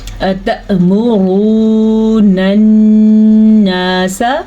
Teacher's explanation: نون کے اوپر شد کی وجہ سے نون پہ غنہ ہوگا